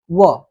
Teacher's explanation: दंतोष्ठ का मतलब हो गया व। इसमें सिर्फ दांत मतलब ऊपरी दांत और निचले होठ को स्पर्श करके बोला जाता है।